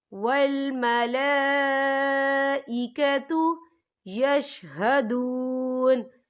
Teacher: انزلہ بعلمہ والملائکۃ، یا دیکھیں والملا، یہاں لام کے اوپر کھڑی حرکات ہے اور اس پر مد بھی ہے، یہ مد جو ہے مد متصل ہے، اس کی مقدار 4 حرکت کے برابر ہے، تو ہم اسے 4 حرکت کے برابر کھینچ کے پڑھیں گے